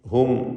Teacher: ഇതിലുള്ള സാക്കിൻ തമീമിനെ ഇൽഹാർ ഷഫവി മണിക്കാതെ വെളിവാക്കി ഉച്ചരിക്കണം.